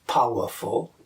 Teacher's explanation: one stressed syllable followed by two unstressed syllables, like powerful, is called a dactyl.